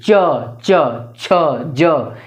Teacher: अब च देखिए तालु से, च छ ज, ये होता है तालु से।